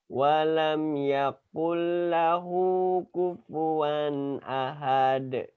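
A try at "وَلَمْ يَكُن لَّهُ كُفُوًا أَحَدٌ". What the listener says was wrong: Ahad. Hanya jangan dipanjangin.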